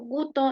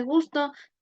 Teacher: la eliminación muy frecuente de la S